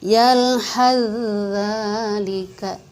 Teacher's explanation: Tapi ketika kita membacanya yalhadzalika, sa-nya dilebur ke dalam huruf za. Tuh. Sa-nya tidak dibaca lagi, masuk ke dalam huruf za.